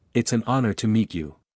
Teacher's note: it's an honor to meet you explanation an is used because honor begins with a silent h and the word starts with a vowel sound